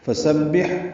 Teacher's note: فا کو جلدی ادا کرنا ہے، سین صفیر کی آواز سے ادا کریں گے، با سے ملائیں گے، با کو ہا سے ملائیں گے، ہا وسط حلق سے ادا ہوگا اور اس پہ ہمس ہوگا یعنی سانس جاری رہے گی۔